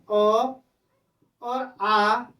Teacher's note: इन स्वरों को उच्चारित करने में जो हवा का बल पड़ता है, वो बल पड़ता है गले में। और गले का पर्यायची शब्द है कंठ, इसलिए अ को कंठ स्वर कहा जाता है।